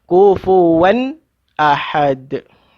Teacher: Sebab tanwin bertemu dengan hamzah. Jadi kena baca izhar. Zahir dia bunyi tanwin itu. Kufuwan, jangan dengung.